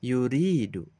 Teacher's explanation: Lafad huruf ro berharokat kasroh ri, sehingga kita baca 2 harokat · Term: mad tabi'i